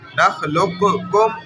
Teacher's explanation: قوف کا ذرا سا اظہار ہو رہا ہے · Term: ادغام ناقص